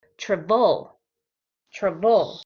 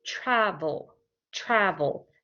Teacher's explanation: the first part of the word is stress we say it louder